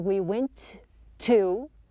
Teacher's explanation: we are not pronouncing two T's